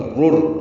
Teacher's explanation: را کو را سے ملا دیں گے، ادغام کریں گے، ادغام کامل ہے، یہاں پہ غنہ نہیں ہوگا. رر، را کو را سے ملا دینا ہے.